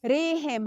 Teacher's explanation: ها د حلق له اولې حصې څخه